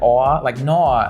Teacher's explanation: And like I haven't like practiced it, so I'm not very good at it, But like the Australian like O sound, when Australians say words that end in O, they say it like aw